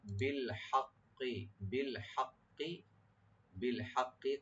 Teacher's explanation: কাফটাকে একটু রাইট দিয়ে পড়তে হবে জিব্বার গোড়া থেকে